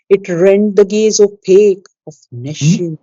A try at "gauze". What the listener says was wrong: Gauze, not gaze, gauze.